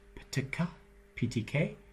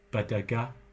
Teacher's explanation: P-T-K, P-T-K, unvoiced, and ba-da-ga, voiced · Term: stops